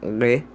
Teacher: Primeiro tem as oclusivas, plosivas ou mesmo pausas, que quando você bloqueia o ar completamente, depois libera ele.